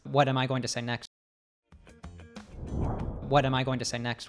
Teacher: the auxiliary verb am is not said in its strong form but rather it's reduced with a schwa · schwa um also i did not say gonna this time but i did leave out the g at the end of going and followed that up with a reduced to ta altogether